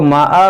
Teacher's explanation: اس دو زبر کو الف سے بدلیں گے